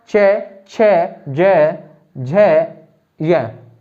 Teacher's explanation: जैसे आपका च, छ, ज, झ, य, मतलब जीभ जो है मुख के पिछली ऊपरी हिस्से के पिछले भाग पर जाके क्या होती है? टच होती है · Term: तालव्य ध्वनि